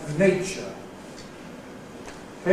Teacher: ‘Yod coalescence’ This is something that's been around in English for many many years. When you have / t / followed by / j /, or / d / followed by / j /, they tend to coalesce, come together to make / ʧ / or / ʤ /. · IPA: [ ˈneɪʧə ]